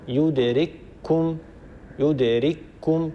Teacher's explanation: أينما تكونوا يدرككم الموت، هي يدرككم، كاف ساكنة بعدها كاف متحركة، لكن ندغم الكاف الأولى الساكنة في الكاف الثانية المتحركة فيصير النطق بكاف مشددة يرتفع عنها المخرج ارتفاعة واحدة، يدرككم، يدرككم، كاف مشددة.